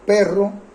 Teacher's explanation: Perro tiene una vibración múltiple